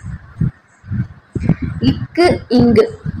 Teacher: நாவின் முதல் பகுதி அன்னத்தின் அடிப்பகுதியை பொருத்த வருது